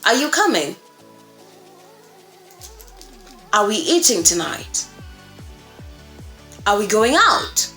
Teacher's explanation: generally they end with just that rising. Okay, that rise in pitch.